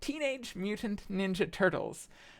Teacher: Teenage Mutant Ninja Turtles is the 4 trochees in a row. It's accented, unaccented, accented, unaccented, accented, unaccented, accented, unaccented.